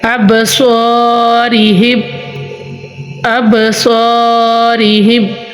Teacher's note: الف سے پہلے حروف مستعلیہ آنے کی وجہ سے ادھر ہم الف کو بھی پوری یعنی موٹا پڑھیں گے